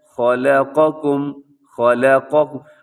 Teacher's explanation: خا موٹا لام باریک قاف موٹا باقی دونوں بھی باریک